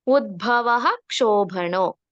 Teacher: ವಿಸರ್ಗದ ಮುಂದಿನ ಅಕ್ಷರ ಕ್ಷ ಇರೋದ್ರಿಂದ ಪೂರ್ತಿ ವಿಸರ್ಗ ಹೇಳ್ಬೇಕು